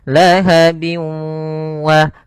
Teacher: Bi gunnah atau ya di sini idgham ma'al gunnah, yaitu idgham yang disertai dengan gunnah, yaitu cara membacanya yaitu masukkan suara tanwinnya bin ketemu wa, dimasukkan ke huruf waw dan ditahan karena disertai dengan gunnah. Lahabiu wa, bukan lahabiu wa tapi lahabiu wa, karena dia masuk gunnah, masuk ke rongga hidung. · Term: idgham bi gunnah